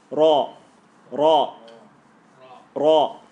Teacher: There's a little ripple in it. There's a little flick going ra.